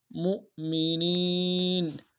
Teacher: مؤمنین میں میم کا حمزہ کے ساتھ ملانا ہے، حمزہ بشکل واو ہے، جھٹکا دیں گے، اور نون کو یا کے ساتھ ملانا ہے، یا مدہ ایک مقدار میں کھینچیں گے۔